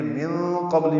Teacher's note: من قبل میں نون ساکن کے بعد قاف آنے کی وجہ سے اخفا ہے، قاف پر ہے، با ساکن پہ قلقلہ ہے